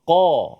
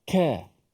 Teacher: Tapi qaf qa. Dia tak ada angin. Dia kalau mati dia qalqalah.